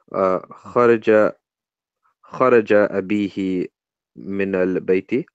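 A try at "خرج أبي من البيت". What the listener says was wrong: It's not abihi, there's no ha on the end there.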